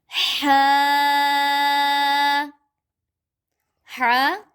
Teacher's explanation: हलक के शुरू से जो मुंह की तरफ है वहां से इसको पढ़ते हैं